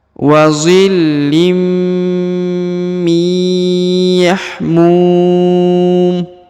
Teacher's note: boleh empat boleh enam harakat ya karena di depan huruf mu terdapat wau sukun atau wau mati